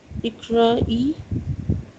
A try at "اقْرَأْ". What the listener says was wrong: اس میں سکون ہے صرف، کیونکہ الف لام نہیں ہے تو صرف سکون ہی رہے گا، کسرہ نہیں پڑھیں گے. اقرا